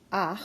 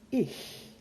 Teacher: the air goes more toward the soft palate or the roof of the mouth versus behind the teeth with the Ichlaut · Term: Achlaut